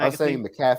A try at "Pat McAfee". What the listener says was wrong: I was emphasizing the wrong thing.